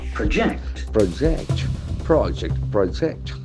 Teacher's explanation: When it is a verb, the accent shifts toward the second syllable.